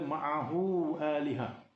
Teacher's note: Ini menunjukkan hukumnya ialah hukum mad, iaitu ada huruf mad di situ, itu huruf waw. Dan hukum di sini ialah mad silah tawilah, panjang, lebih daripada 2 harakat, disebabkan selepasnya ada huruf hamzah